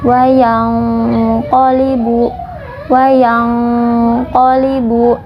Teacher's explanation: kita menyamarkan Nun kemudian kita menyiapkan huruf qaf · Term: ikhfa